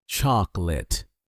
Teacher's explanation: Notice that the O in the middle almost disappears. It's not chocolate, it's just chocolate.